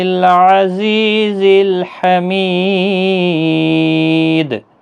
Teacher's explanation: دال وقف کی صورت میں جب ساکن ہوگا، حروف قلقلہ کا حرف ہے تو وقف کی صورت میں قلقلہ بھی ہوگا اور 3 سے 5 الف کی مقدار کے برابر کھینچ کر